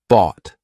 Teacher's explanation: t lots of times it'll be that held T So bot my tongue is still up there but I just didn't release it